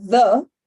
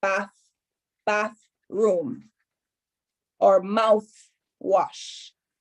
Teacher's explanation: the voiced th which is in the and the voiceless th which is the th in bath